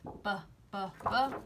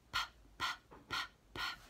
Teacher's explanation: But with b, we have our voice on, and with p, p, p, we have our voice off. It's very quiet.